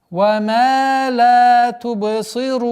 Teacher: لا, вторая долгота в размере двух огласовок, тубы, правило калькаля, сы, рун. При остановке фатха переходит в сукун, и долгота в размере 4 огласовок причинного удлинения.